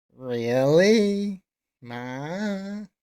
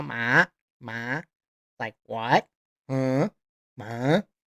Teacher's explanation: the second tone, it is a rising tone. If you look in your textbook, it says it goes from 1 to 5, going up, like asking a question.